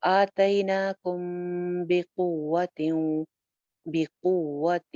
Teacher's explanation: قاف کو اپنے واؤ کے ساتھ جوڑنا ہے، قاف موٹا حرف ہے، قوہ، واو کے اوپر شد ہے، اٹ مینس کہ واو 2 مرتبہ موجود ہے. · کم کی میم کے اوپر ہم غنہ کریں گے کیونکہ ہم نے پڑھا تھا کہ میم ساکن کے بعد اگر با آ جائے تو غنہ ہوتا ہے، اور اگر میم آ جائے تو غنہ ہوتا ہے، یعنی دونوں لیٹرز کے اوپر غنہ ہوتا ہے، میم اور با کے اوپر، تو یہاں پہ با آ رہا ہے۔